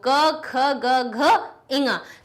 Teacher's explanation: सबकी ध्वनि एक ही जगह से निकल रही है, कंठ से निकल रही है।